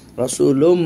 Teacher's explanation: যে প্রবেশ হলো সে তার বৈশিষ্ট্যতে থাকতে পারবে না, অর্থাৎ তানবিন রসুলুন এই তার ইজহার বৈশিষ্ট্যতে থাকতে পারবে না, সে ঢুকে যাবে মিমের ভিতরে, অর্থাৎ ইদগাম হয়ে যাবে, ইদখাল হয়ে যাবে, তার ভিতরে ঢুকে যাবে। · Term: ঈদগাম